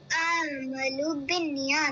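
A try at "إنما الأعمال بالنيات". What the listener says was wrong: میم کو لمبا کیجیے، اعمالو.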